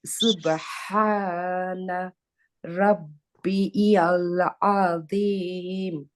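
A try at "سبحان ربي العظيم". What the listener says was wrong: হ্যাঁ, গুড।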